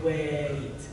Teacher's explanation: when you slow down, if you really say wait, you can kind of hear there's a way, E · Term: diphthong